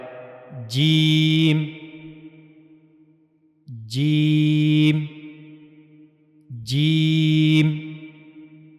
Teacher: तो जीम की अदायगी के लिए जीम को अदा करने के लिए जबान का यह वाला हिस्सा यानी दरमियानी हिस्सा और मुंह का ऊपर वाला हिस्सा इस्तेमाल होता है। जबान का दरमियानी हिस्सा जब मुंह के ऊपर वाले हिस्से के साथ जाकर मिलता है तो तब जीम अदा होता है। · زبان کا درمیانی حصہ جب منہ کے اوپر والے حصے کے ساتھ جا کر ملتا ہے تو تب جیم ادا ہوتا ہے۔